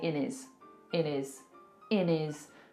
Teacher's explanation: Taken away that H completely and we've made it into one word. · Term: drop our H's